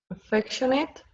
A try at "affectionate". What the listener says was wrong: I know it looks like affectionate, but we don't say ate, A-T-E. At the end of a word is it. Affectionate.